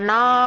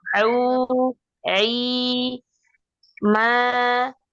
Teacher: posisi suara di aljawf di depan. Dorongnya keluar ke depan, bukan ke atas